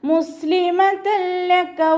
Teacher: തെൻവീനിന് ശേഷം ഇദ്ഗാം ബിലാഗുനയുടെ അക്ഷരമായിട്ടുള്ള ലാമാണ് വന്നിട്ടുള്ളത്. തെൻവീനിലുള്ള നൂനിൻ്റെ സൗണ്ടിനെ ലാമിലേക്ക് ലയിപ്പിക്കുന്നുണ്ട്. പക്ഷെ നമ്മളവിടെ മണിക്കാതെ ഓതിക്കൊടുക്കുക. ഇദ്ഗാം ബിലാഗുന ആയതുകൊണ്ട് മണിക്കാതെ ഓതാൻ ശ്രദ്ധിക്കുക കേട്ടോ.